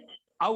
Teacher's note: ఈ ఔకాని పలకాల అంటే కంఠము ఓష్టం అంటే కంఠంతో పాటు ఓష్ట అంటే పెదులు కూడా సహాయం కావాలి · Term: కంఠ్యోష్టవౌ